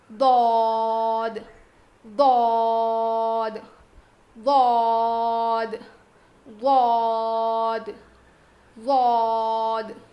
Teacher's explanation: زبان کی کروٹ کو اوپر کے داڑھ میں لگا کر پڑھیں گے